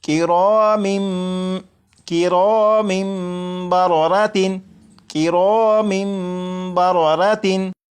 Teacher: जब तनवीन के बाद बा है तो यहाँ पर इकलाब होगा, यानी यहाँ पर तनवीन के अंदर जो नून साकिन की आवाज़ होती है उसे मीम से बदलकर गुन्ना करके पढ़ेंगे और ये पढ़ा जाएगा किरामिम किरामिम बररातिन किरामिम बररातिन।